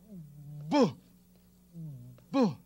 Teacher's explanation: the sound of the letter B is produced by placing the lips firmly together, thusly. See that?